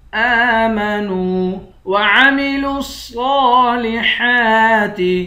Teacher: لام کو صاد کے ساتھ ملا کر پڑھیں گے، صاد پر کھڑا زبر ہے، صاد کو موٹا بھی پڑھیں گے، ایک الف کے مقدار بھی کھینچیں گے۔